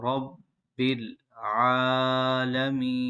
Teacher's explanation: یہاں پر با مشدد ہے، رفع قلقلہ میں سے ہے، یہاں پر جماؤ کریں گے